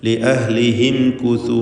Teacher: സാക്കിനത്തായ മീമുണ്ട്, ഇൽഹാർ ഷഫവിയാണ്, മണിക്കാതെ വെളിവാക്കണം.